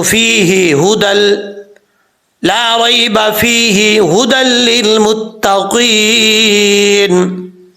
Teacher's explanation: وقف کریں گے تو ہا ساکن ہو جائے گا، ملا کے پڑھیں گے تو فیہ ھدی